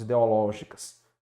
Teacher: a tonicidade, que é a sílaba forte, recai na antepenúltima sílaba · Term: proparoxítona